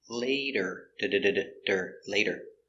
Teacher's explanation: we have the t between two vowels we pronounce it like a d